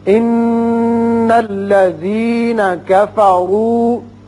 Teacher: نون مشدد ہے، غننے کی آواز نکالیں گے. کفروا میں را کے اوپر پیش ہے، اس کو پر پڑھیں گے.